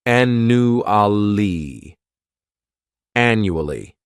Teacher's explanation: This word has 4 syllables, and the stress is on that first syllable. The second syllable, it's like you're just saying that letter U, and the third syllable has that schwa, annually.